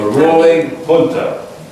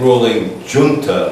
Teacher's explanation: in Spanish the J is more or less pronounced in a h fashion I'm not saying ruling Jun like you might think looking at